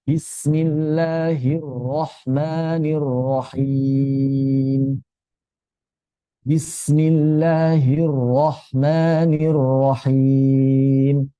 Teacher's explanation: Lam tidak jadi syiddah, ro tidak memantul ya.